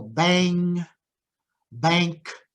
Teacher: when it's together, it's usually pronounced eng, the velar nasal, the N with a tail on it.